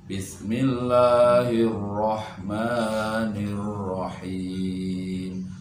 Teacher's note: Ro itu punya sifat takrir, getar ya.